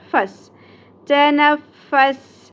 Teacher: سین میں سیٹی کا element clear ہونا چاہیے